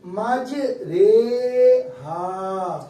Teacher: ماج، اچھا ایک یاد رکھیے گا، پورے کلام پاک میں یہ ایک واحد لفظ ہے پورا، جس کی راہ کو ہم رے کہہ کے پڑھتے ہیں، قطرے، میرے، تمہارے، ہمارے، یہ جو بڑا ہے نا، یہ اس انداز سے اس کو پڑھتے ہیں، راہ امالہ والے رے کہتے ہیں اس کو، آواز کو لمبی کر کے پڑھتے ہیں، جوڑ دے کر پڑھیں گے، مج رے ہا، لفظ ہے جس میں راہ کی آواز ری کے بجائے رے پڑ جاتی، بس صرف ایک لفظ ہے یہ موت۔